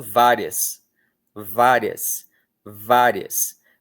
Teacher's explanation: Veja como o i mal é vogal. Ele é muito rápido. Ele é pronunciado com com muita rapidez. Ele quase não é pronunciado, se você parar bem para pensar.